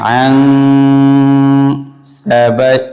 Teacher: এই নুন সাকিনকে ইখফা করতে হবে, গুণনা করতে হবে নাকের ভিতরে নিয়ে